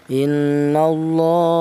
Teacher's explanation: Di sini ada lafal Allah di mana lafal Allah itu di dari huruf yang berharakat fathah juga. Maka ini huruf lam jelas ini dibaca panjang atau dibaca tafhim.